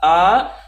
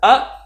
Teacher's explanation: हमने छोटा आ से थोड़ा सा ज़्यादा समय लिया बड़ा आ को बोलने में।